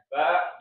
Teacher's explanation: ba ini jangan sampai keluar udara ya, jangan ha, hi, hu, enggak ya